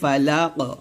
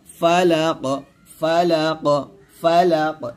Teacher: যদি আমরা এখানে ওয়াকফ ধরি তাহলে বলতে হবে ফালাক, এই কফটা কলকলা করতে হবে